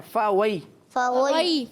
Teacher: पहले फ़ा में होंठ गोल नहीं होंगे और फिर वाव में होंठ गोल होंगे। जब तो फ़ा और वाव में फ़र्क होगा, वरना फ़ा वाव की तरह हो जाएगा और वाव फ़ा की तरह लगेगा।